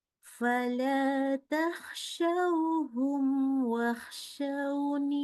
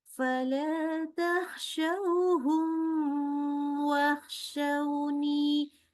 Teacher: syafawi Artinya kita membacanya membaca mimnya itu izhar jadi jelas ya sifat huruf mimnya semua jelas tanpa kita kasih tambahan ghunah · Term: izhar syafawi